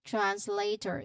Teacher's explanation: The emphasis on this part is on the second syllable, lay, which has a diphthong A sound.